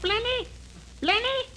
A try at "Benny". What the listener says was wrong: No, Benny. The L is silent in there.